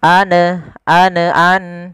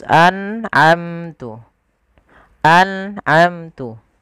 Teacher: nun sukun bertemu dengan Ain harus jelas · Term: izhar halqi